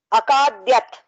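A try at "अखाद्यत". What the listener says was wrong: Akadyata. No halanta. Akadyata.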